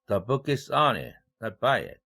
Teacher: 이럴 때 on과 by 대조를 시키고 있어요. 그래서 이 전치사, 기능어인 전치사 on과 by가 각각 일강세를 받고 있어요. not by it이라는 그 쉼표 뒤에 의사단락 속에서 일강세를 by가 가져가고 있고 앞에 의사단락 중에서도 the book is on it 하고 전치사 on이 일강세를 가져갔네요. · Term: 대조강세